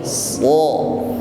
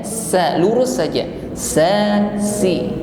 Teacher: Ketika mengucapkan so, lidah bagian pangkal ini naik, so. Maka ketika lidah terangkat, suaranya pun naik, ya. Bunyi yang keluar menjadi tebal. Beda dengan ketika mengucapkan sin. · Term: isti'la